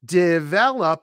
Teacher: Develop, three syllables. The stress is on the second syllable.